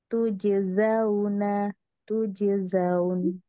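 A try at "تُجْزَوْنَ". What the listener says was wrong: Zanya dipendek, diringankan lagi. Tujeza, bukan zau. Za, zaun. Tujeza, tujezaun. Tujeza, tujeza. Gaza, za, za. Dorong. Tujeza.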